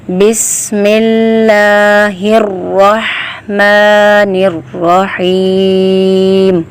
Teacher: حلق کے درمیانی حصے سے ہا کی آواز پیدا ہوگی۔ · را کے اوپر زبر ہے تو را کو پر پڑھیں گے۔